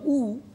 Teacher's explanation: উ যখন আমরা উচ্চারণ করলাম উ, আমাদের ঠোঁটটা গোল হয়ে গেল। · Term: বর্তুল স্বরধ্বনি